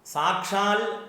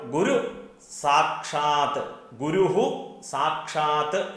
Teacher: സാക്ഷാൽ ഇൽ എന്ന പദം മലയാളത്തിലെ ഒരു പ്രയോഗമാണ്. സംസ്കൃത ശ്ലോകങ്ങളിൽ ഇൽ എന്നുള്ള പദം ഇല്ല. അത് ത് ആണ്, സാക്ഷാത്ത് ത് ആണ്. അപ്പോൾ ഗുരു സാക്ഷാത്ത്, ഗുരുഹു സാക്ഷാത്ത് എന്നാണ്.